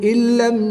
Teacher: نون ساکن کے بعد لام حروف یرملون میں سے ہے تو یہاں پر ادغام بلا غنہ ہوگا، یہاں پر ہم غنہ نہیں کریں گے۔